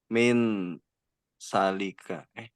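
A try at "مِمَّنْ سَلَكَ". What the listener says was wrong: Eh ini ada dua mim di sini ya He ada mim satu lagi bertumpuk mim di situ ya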